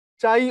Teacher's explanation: দেখো চাই শব্দে দুটো স্বরধ্বনি আছে, একটা আ এবং ই। এখানে আ হলো পূর্ণ স্বরধ্বনি, ই হলো অর্ধ স্বরধ্বনি।